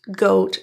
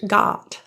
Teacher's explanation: Compare goat rounded versus got. Open relaxed.